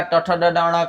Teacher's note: ट, ठ, ड, ड, ण का उच्चारण मूर्धा से होगा। जिसको तालु का ऊपरी भाग बोलते हैं।